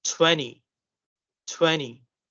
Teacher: if the T is after N, so the T won't be pronounced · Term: silent T after N